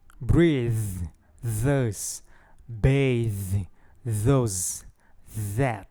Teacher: Do lado direito, nós temos o fonema fricativo dental sonoro, que soa como z. Em sua pronúncia, há uma vibração das cordas vocais, por isso a sua classificação como sonoro.